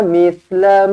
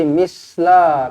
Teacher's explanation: Pastikan kita baca dengan lidah, keluarkan sedikit lah. Sebab makhraj huruf sa di hujung lidah lah. Okey, tak boleh misla.